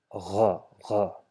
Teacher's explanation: we have to make sure that we have vibration in our throat while producing this sound. So just notice we have gha, gha, just where your mouth ends and your throat begins. · just where your mouth ends and your throat begins. You just need to vibrate gha over there. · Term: ghain